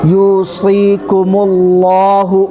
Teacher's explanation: لفظ اللہ کے لام سے پہلے زبر یا پیش ہو تو لفظ اللہ کے لام کو پر پڑھتے ہیں، مطلب فل ماؤتھ آواز آنی چاہیے